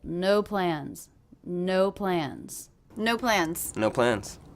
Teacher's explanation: I'm really hearing this as two different stressed words they're both one syllable